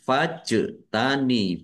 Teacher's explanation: jim sukun bacaan qalqalah di tampakkan pantulannya